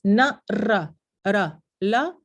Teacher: para n, r y l es el ápice de la lengua que toca los alveolos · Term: ápico alveolar